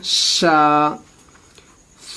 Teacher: 3 نقطے والے شین کو سیٹی کی آواز میں پڑھیں گے